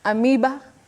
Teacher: diagraph is a combination of two letters representing one sound and the sound in that word is e the long sound e